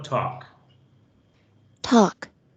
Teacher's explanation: La L no suena. Entonces yo digo talk.